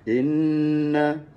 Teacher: Kalau kita jumpa wajib didengungkan dengan kadar dua harakat, panjang sikitnya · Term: wajib al-ghunnah